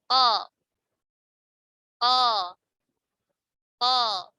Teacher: Jadi tadi akar lidah masuknya ke tenggorokan bagian atas ya, bagian paling dekat. Nah, kalau lidah pangkal lidah bertemu dengan langit-langit yang lunak. Itu ada huruf qa.